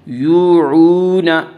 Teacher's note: بما یوعون، واو مدہ وہ واو جو ساکن ہو اور اس سے پہلے پیش ہو، واو مدہ کو 1 الف کے برابر کھینچ کر پڑھیں گے